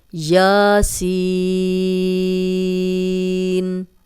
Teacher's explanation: کھڑا زبر اور سین کو 6 حرکات لمبا کریں گے